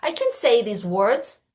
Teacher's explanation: Você vê que no final da minha frase, ela sobe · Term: entonação positiva